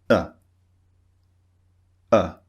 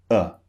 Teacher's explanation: no rounded lips no wide mouth no open mouth it's just neutral